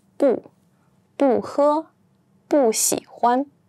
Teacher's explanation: 不 here is pronounced as the fourth tone, 不, because 喝 is the first tone, and 喜 is the third tone, so 不 stays as the fourth tone, 不, 不喝, 不喜欢.